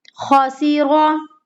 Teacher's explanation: را کو موٹا پڑھنا ہے کیونکہ زبر کی حرکت ہے